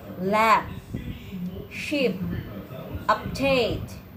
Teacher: the final stops are always pronounced just without a puff of air